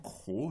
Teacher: j'ai un re qui est phonétiquement sourd, pas phonémiquement, mais phonétiquement sourd. La surdité du re, elle est totalement prédictible, puisque systématiquement, dès que j'ai un phonème R à côté d'une consonne sourde, ce phonème R serait réalisé sous forme sourde.